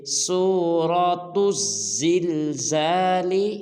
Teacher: سورۃ الزلزال، بعض مسلمان اس کو پڑھ دیتے ہیں سورۃ الزلزال، جن کی تا کو لام کے ساتھ ملا دیتے ہیں، یہ بالکل غلط ہے۔ تا کو زا مشدد کے ساتھ ملائیں گے